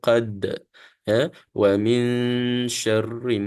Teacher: Dal ini adalah huruf Qalqalah jadi kita bunyikan juga lebihan dia